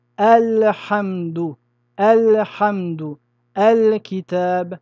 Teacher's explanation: il faudra sortir le lam de son makharaj, sans chercher à faire de idgham ou de ikhfa. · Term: al-izhar